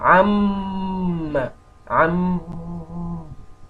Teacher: you can see a sound is trying to force out itself from my nose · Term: ghunna